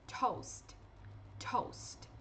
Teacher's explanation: O primeiro T, ele é bem plosivo e ele tem essa aspiração, que é como se fosse um no início. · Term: aspiration